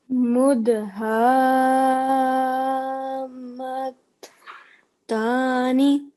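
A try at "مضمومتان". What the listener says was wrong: Well done. Excellent. Really good.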